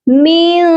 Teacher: نون ساکن پر ہم اپنی آواز کو ناک میں چھپا کر پڑھیں گے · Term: اخفا